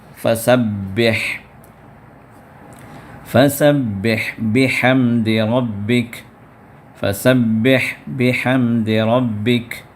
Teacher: تو ہا جو نکلتی ہے آخری حلق سے، اور ہا جو نکلتی ہے اس سے اوپر والی حلق سے، یعنی درمیانی حلق سے. تو درمیانی حلق سے اس کو نکالیں.